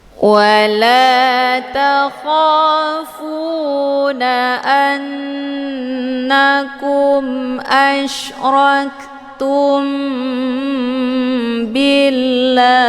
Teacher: cara bacanya mimnya ditekan kemudian ditahan lebih kurang dua kali ketukan · mimnya ditekan kemudian ditahan lebih kurang dua kali ketukan tumbi jadi mim ini sudah menjadi agak samar-samar hukum bacaan ikhfa syafawi dibacanya sambil didengongkan